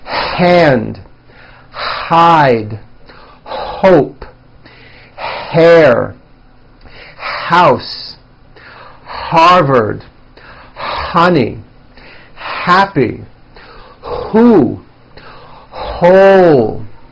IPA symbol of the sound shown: h